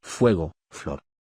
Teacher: F. Representa el sonido fricativo labio-dental.